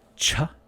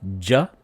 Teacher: ja the same placement with the lips and teeth and tongue just with the voicing